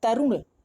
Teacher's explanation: र का उच्चारण जो मात्रा में ऊ हो रहा है वो जल्दी से हो रहा है, तो हमारा ए ऑप्शन सही है, तरुण।